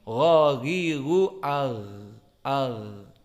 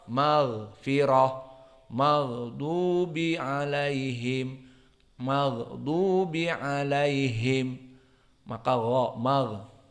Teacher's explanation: maka gha mempunyai sifat yang khusus. Ada jahr dan ada rokhawah.